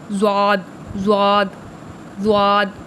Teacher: زبان کے کنارے اور اوپر کی داڑھوں سے، جو اوپر کی داڑھیں ہیں نا ان سے اور زبان کے کنارے سے ، ٹھیک ہے، وہاں سے نکلے گا زواد، زواد، زواد، معجمہ